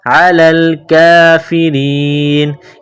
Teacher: را کے نیچے زیر ہے، را کو باریک کرنا ہے